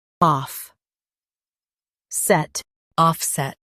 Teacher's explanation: Emphasize off and keep set clear.